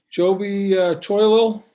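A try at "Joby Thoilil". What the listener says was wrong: That's it. It's TH, so it's Joby Thoilo.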